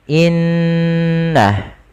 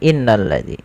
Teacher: menahan suara gunnahnya dan menahan suara n-nya sepanjang 2 harokat, baru dilepaskan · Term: bacaan gunnah